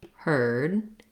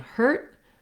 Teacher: So this is a phenomenon that we use a longer vowel before the voiced sound like the D, and a shorter vowel before a voiceless sound like the T.